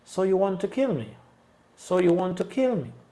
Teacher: so no va a llevar ningún acento ni you. Va a ser neutral. Pero vamos a igualmente en want subir y bajar. · So you want to kill me. Y ahí ponemos el acento en want y bajamos a partir de ahí. Pero llegamos en un tono normal.